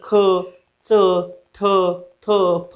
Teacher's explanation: मुखातील अवयवांचा एकमेकांशी स्पर्श होतो, जिभेचा, दाताशी किंवा ओठाशी असा स्पर्श होऊन ज्या व्यंजनांचा उच्चार होतो त्या व्यंजनाला स्पर्श व्यंजन असे म्हणतात